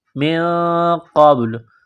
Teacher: نون ساکن کے بعد قاف ہے، حروف اخفا ہے تو نون ساکن پر غنہ کریں گے، قاف کو موٹا کرنا ہے